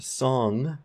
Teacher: finally our velar nasal in the word song at the end there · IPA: ŋ